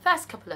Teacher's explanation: 咁點解佢讀得快嘅時候會變成咁咧？其實有啲原因嘅。如果佢快咁樣講咧 ，first couple of 就會變成 first couple of。咁點解會變成咁嘅咧？就因為 first 呢一個字咧，最尾係一個 T 音嚟嘅。如果咧佢最尾係個 T 音咧，加上後邊嗰 consonant sound 啦，加上 K 呢一個 consonant sound， 咁 which is 嗰個 C 發出嚟嘅 consonant sound 啦，加埋一齊咧。因為我哋又要發出 T 又要發出 K 就好麻煩，咁好多時咧就會做咗一個 ellision 省音嘅動作